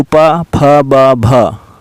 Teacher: ये सभी ओष्ठ से उच्चारण होता है, क्योंकि आपस में दोनों ओष्ठ टकराते हैं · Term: ओष्ठ व्यंजन